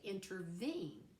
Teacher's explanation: three syllables with the stress on the third one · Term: anapestic